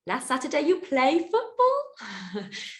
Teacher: you might repeat the sentence with a rising intonation like a question